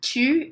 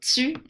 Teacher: if you get this word tu in standard French, you end up sort of adding an S into it and saying tu, and du would be zu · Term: sibilation